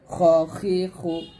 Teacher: খটা হবে হলকের শেষ থেকে উচ্চারণ করতে হবে মোটা করে